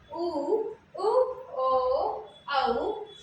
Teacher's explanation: वृत्तमुखी में क्या होते हैं कि जिसमें ओठ गोलाकार होता है, तो वो हो जाएंगे हमारे वृत्तमुखी।